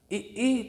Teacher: दोनों जबड़े एक दूसरे की ओर खींचते हैं और ये जो ओठ वाला हिस्सा होता है वो पीछे की ओर जाता है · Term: तालु